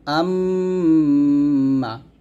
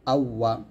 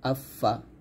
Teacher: এই চারটা হরফ আমরা ঠোঁট থেকে নিয়ে আসবো, অর্থাৎ মিম, বা, ওয়াও, ফা।